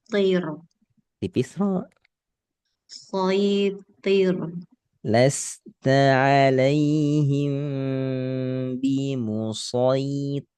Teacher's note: tipiskan ro sukun karena diawali kasrah